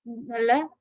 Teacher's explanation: when you say L, you might feel your tip of the tongue rises and touches a particular place above the mouth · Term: alveolar ridge